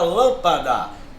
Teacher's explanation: última não é oxítona não é a penúltima não é paroxítona ela é a antepenúltima é a sílaba mais forte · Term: proparoxítona